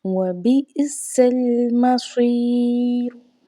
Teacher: سین کو سیٹی کی آواز سے ادا کرنا ہے، صاد حروف مستعلیہ میں سے ہے، حروف مستعلیہ میں سے ہونے کی وجہ سے صاد کو موٹا پڑھا جاتا ہے۔